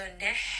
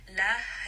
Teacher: So now you can tell that both of these sounds should have a different, ending. So nih, this is going to be from the middle of the throat. La is going to be from the chest.